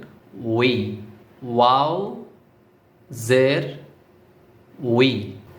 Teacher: প্রথমে দুইটা ঠোঁট গোল হবে তারপরে লাস্টের দিকে বা শেষের দিকে ছড়িয়ে দিবেন